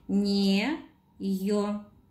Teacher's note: На букву «ё» падает ударение. Значок ударения ставить не нужно.